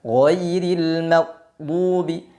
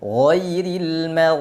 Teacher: Karena saat kita mengucapkan huruf ghain, suaranya mengalir, tidak tertahan. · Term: rakhawah